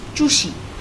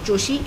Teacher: it should have been choshi, but it's not choshi, it's chushi. The vowel of the first syllable also changes.